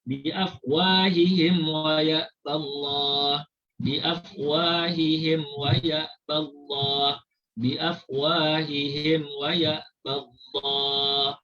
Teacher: Mim dibaca secara jelas tanpa didengungkan. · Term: izhar syafawi